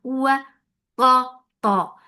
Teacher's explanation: Ta has itbaq. And it is the most heaviest letter in Quran, so make sure to make it heavy.